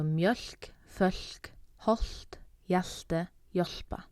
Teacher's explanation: when you pair L with these different letters, then you get an aspirated sound. So L and K would be mjölk and fölk.